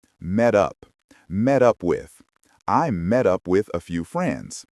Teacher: The T in met connects to the U in up. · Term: linking